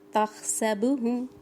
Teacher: اس ہا میں سانس کی آواز ہوگی